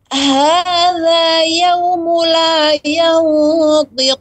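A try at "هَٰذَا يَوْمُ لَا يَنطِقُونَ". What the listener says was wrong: La yaw, panjangkan lagi sedikit untuk ikhfa-nya. panjang ikhfa-nya. Tebal. Kurang panjang.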